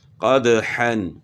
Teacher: دال حروف قلقلہ میں سے ہے، تو دال میں قلقلہ ہوگا، یعنی ہلا کر پڑھیں گے دال کو